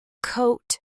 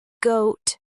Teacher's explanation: Both are made at the back of the mouth with the tongue touching the soft palate. K is voiceless, G is voiced.